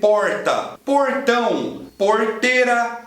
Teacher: ele chama R retroflexo porque você consegue esse R fazendo uma flexão da sua língua para trás retroflexo você vai levantar um pouquinho a sua língua para trás